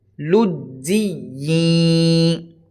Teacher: جب ہم جیم کو یا سے ملا رہے ہیں تو یہاں آواز ناک میں نہیں لے کر جائیں گے